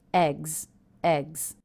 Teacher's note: the plural ending here s is pronounced as a Z that's because the sound before the G sound is a voiced consonant